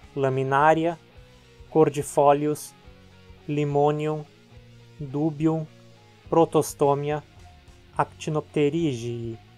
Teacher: sempre formam duas sílabas e esse i é curto. Então as palavras são sempre proparoxítonas.